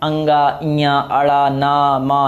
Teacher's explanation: अंगा बोल के देखो तो नासिक के वर्ड है, नाक से बोलते हो, नाक से श्वास निकलती है।